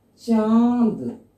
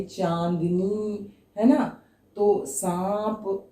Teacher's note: जैसे आपने लिखा चांद, ठीक है, इसमें क्या हो रहा है? मुंह और नाक दोनों का प्रयोग हो रहा है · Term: अनुनासिक